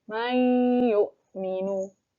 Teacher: Jadi maunya tidak terletak terdengar jelas itu tidak terbaca jelas dan ditahan selama dua harokat disertai dengung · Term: Idgham Bighunnah, idgham bigunnah